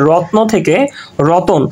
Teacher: রত্ন থেকে যখন রতন হয়েছে তখন মাঝখানে কিন্তু নতুন একটা স্বরধ্বনির আগমন আমরা দেখতে পাচ্ছি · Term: মধ্য স্বরগম